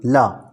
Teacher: ला का उच्चारण स्थान क्या है दंत